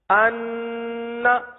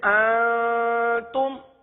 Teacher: ناک کی سخت ہڈی سے اوپر والے حصے سے سخت گنہ ادا ہوتا ہے جیسے مشدد کا گنہ انا، اور اکفا کا گنہ اس سے تھوڑا سا نیچے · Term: مشدد گنہ